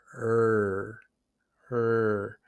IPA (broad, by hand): ɹ